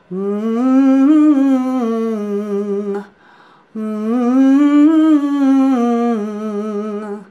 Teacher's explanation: It puts the resonance up back in the soft palate. It brings everything just to a place where it gets the tongue up and out of that clenchy spot in the back of the throat.